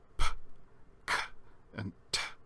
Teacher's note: In other words, we don't use our vocal cords at all when we pronounce them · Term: voiceless